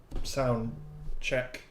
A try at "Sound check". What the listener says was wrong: More emphasis on the check.